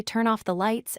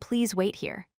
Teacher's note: Listen to how your voice falls naturally on the last word. The more you practice, the more automatic this pattern becomes. · The key similarity is that pitch drops on the final word in both cases. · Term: falling intonation